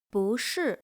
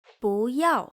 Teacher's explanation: It normally sounds falling, but before a falling sound word, it becomes rising. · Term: the rule of no